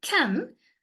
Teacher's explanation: But in here, uk, a, n, can, a is a vowel, n is a nasal consonant. Because of this adjacent nasal consonant, this a becomes nasalized vowel.